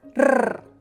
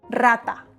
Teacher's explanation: If a word starts with one R, it is pronounced like a strong R